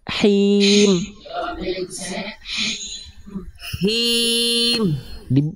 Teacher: dikeluarkan dulu bisikannya dari tengah tenggorokan dikeluarkan bisikannya baru keluarkan vokal i-nya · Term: H kecil